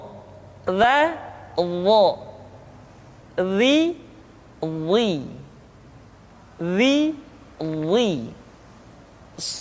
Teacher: Selanjutnya, pengucapan huruf dha diucapkan dengan menyentuhkan ujung lidah dengan dua gigi seri bagian atas